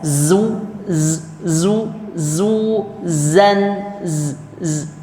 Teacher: Jadi dia bunyinya itu karena suara, bukan karena banyaknya nafas. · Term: zai